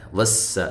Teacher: شوں، یہ نون تنوین کا ادغام ہے، مع الغنہ ہے۔ وس، سین کو باریک سیٹی کے ساتھ